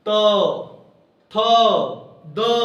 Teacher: तथ द और ल और स को हम लोग दात से उच्चारण करते हैं